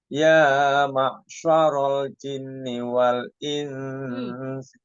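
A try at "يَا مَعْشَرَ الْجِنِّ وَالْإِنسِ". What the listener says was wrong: Jinnya kurang lama.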